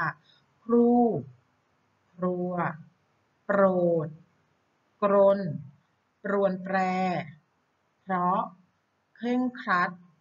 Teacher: เวลาอ่านออกเสียงเนี่ยพยัญชนะทั้ง2ตัวเนี่ยจะต้องออกเสียงพร้อมกันค่ะ